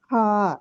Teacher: হা হচ্ছে 2 নম্বর মাখরাজ, কণ্ঠনালীর মধ্যভাগ থেকে